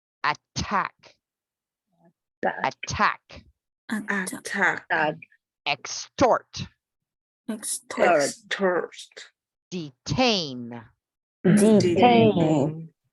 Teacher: And they all have the true T sound. They do not sound like a D at all.